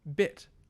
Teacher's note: not quite as high as e not quite as low as a so this is like the english vowel in bit